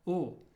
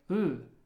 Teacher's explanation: An L, we learned, is pronounced like a L sound, as in love, L. And it's almost like an L in the back of the throat, love. But it can also be pronounced forward in the mouth